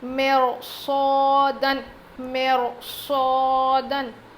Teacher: یہاں پر ہم رو کو موٹا پڑھیں گے باریک پڑھنے کے بجائے، کیونکہ رو ساکن سے پہلے زیر ہے اور اس کے بعد حروف مستعلیہ میں سے صاد آیا ہے، اسی لیے ہم اس رو کو موٹا پڑھیں گے۔